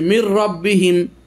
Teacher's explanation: র এবং লাম ইদগাম হবে কিন্তু গুন্না হবে না